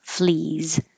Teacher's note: The plural looks like an S but sounds like a Z.